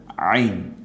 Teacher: হামজাটা ছেড়ে দিয়ে আইনটা গলায় চাপ দিয়ে।